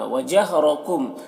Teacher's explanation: میم میں اظہار شفوی ہو رہا ہے، اسے جلد پڑھنا ہے۔